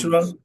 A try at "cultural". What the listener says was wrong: Cultural, no cool. Cool no.